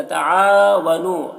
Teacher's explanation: عین میں الف مدہ ہے، اسے ایک الف کے برابر کھینچیں گے